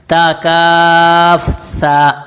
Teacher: سا کے اندر سیٹی کی آواز بالکل پیدا نہیں ہوتی ، سین میں سیٹی کی آواز پیدا ہوتی ہے، لیکن سا